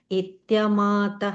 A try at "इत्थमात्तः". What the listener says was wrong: Itham. There is no ya sound there. It's itham ata. Yeah, because I heard you say a ya sound there.